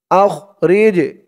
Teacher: জিমটা কলকলার হরফ ধাক্কা দিয়ে পড়তে হবে